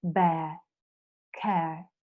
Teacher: It's longer because it's a diphthong, and at the end you can feel the sound of the schwa sound.